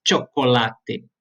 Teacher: Mas cuidem que o CH eu uso. Eu pronuncio o CH como se fosse um tchê. Então, chocolate.